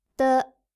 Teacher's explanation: This sound is unvoiced and also unaspirated, so you shouldn't feel much air coming out from your mouth when you say it.